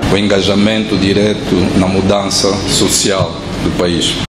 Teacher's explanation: Angolan Portuguese tends to have more open pronunciation of vowels, somewhat similar to Brazilian Portuguese